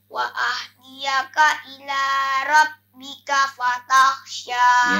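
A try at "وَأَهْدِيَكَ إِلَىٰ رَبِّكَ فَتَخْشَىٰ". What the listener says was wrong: Supaya hanya itu tadi agak apa ya, kecil. Ha besar dia. Wa'ah ya, dengan wa'ah jangan kecil. Wa ahdiyaka.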